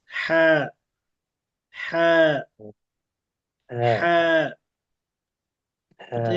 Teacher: সামনে এগুলো দেখাবো সরাসরি। এই হলকের মাঝখান থেকে পাতলা করে উচ্চারণ করতে হবে এবং একটু চিপে চাপ দিয়ে যাতে করে হা এর উচ্চারণটা পরিপূর্ণ হয়।